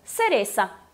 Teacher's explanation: Em toda a América, enfim, é S.